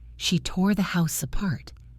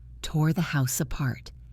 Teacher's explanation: The R in tore connects to the A in a part.